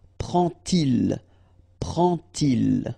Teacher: you won't pronounce it like D to make the liaison, but you will pronounce it like T. And so you will get prend-il.